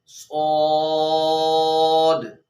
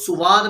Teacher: ये लफ्ज मोटा भी अदा करना है और सीटी भी निकालनी है। हरूफ मुस्तालिया में ये हर्फ आता है जिसको मोटा पढ़ा जाता है, और हरूफ सफीरिया में भी ये हर्फ आता है, तो इसलिए यहाँ पर सीटी भी निकालनी है और हर्फ को मोटा भी पढ़ना है, पुर पढ़ना है।